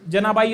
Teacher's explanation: जनाबाई हा शब्द जो आहे तर तो दंत तालव्य आहे